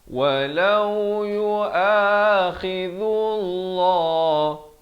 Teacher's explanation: Lafaz jalalah dibaca nipis. Dibaca nipis dua harakat.